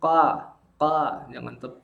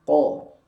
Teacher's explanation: Ingat bunyi fathahnya tebal sempurna, jangan ka, jangan tipis tapi ko.